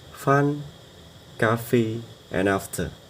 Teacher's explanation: Of sound is an unvoiced sound produced by blowing air through a narrow opening between the lower lip and the upper teeth. Like us sounds, it is a fricative sound without vocal cord vibration.